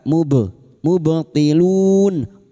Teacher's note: Fa'al mubtilun ba sukun huruf ba yang mati asli di tengah kalimat qalqalah sugro. Jangan lupa dipantulkan.